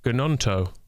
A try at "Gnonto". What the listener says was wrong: Surely the G would be silent. Gnonto.